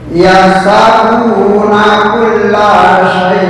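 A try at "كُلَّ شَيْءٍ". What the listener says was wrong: Eh, bukan syai. Bukan sya. Sa. Sa sa sa sa Belum, bukan so,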